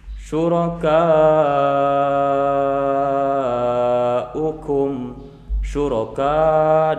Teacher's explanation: dibaca panjang 5 harokat, namanya mad wajib muttasil karena bertemu hamzah dalam satu kalimat